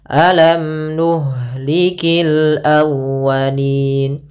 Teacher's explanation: Nah, setelah ini kita lihat ada nun, berarti dia izhar syafawi. Izhar berarti mimnya jelas, tidak boleh ditahan.